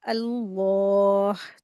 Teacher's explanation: लामे जलाला का rule apply करेंगे, लाम को मोटा करके पढ़ेंगे। ठीक है, लफ्ज अल्लाह के लाम को हैवी करके पढ़ेंगे।